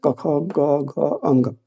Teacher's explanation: तो कंठ जो है वो कवर्ग जो भी है कवर्ग वाला क ख ग घ अंग यह कंठ से बोले जाते हैं